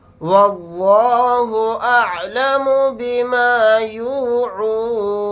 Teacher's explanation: لفظ اللہ کے لام کو موٹا یعنی پر پڑھیں گے کیونکہ لفظ اللہ کے لام سے پہلے زبر آ رہا ہے